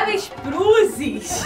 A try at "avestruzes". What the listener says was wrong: Não, não é avestruzes. É com T.